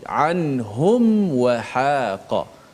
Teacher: jelaskan mim mati itu dengan cara betul-betul menutup rapat suara huruf mim tu tanpa kita memanjangkan dengung pada mim itu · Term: izhar syafawi